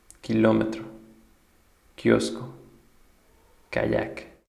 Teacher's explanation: K. Pronounced like the English K without a puff of air.